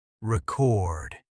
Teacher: if you say, I bought a record, it is a noun, and the stress moves to the first syllable.